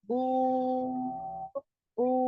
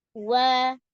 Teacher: Dengan maddiyah waw, tekanan udara di dalam rongga lebih berat meskipun tonjolan bibir sama.